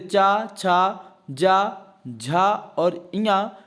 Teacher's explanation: संपूर्ण चा वर्ग जो है तालब्य ध्वनि है या तालु से बोले जाते हैं